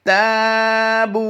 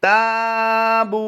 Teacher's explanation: इस वक्त आप अपनी स्क्रीन पर जो लफ्ज़ देख रहे हैं इसमें भी ता के साथ अलिफ आया है तो इसको अलिफ मद्दा करते हुए लंबा करेंगे और इस अलिफ की अदायगी बारीक ही करेंगे हम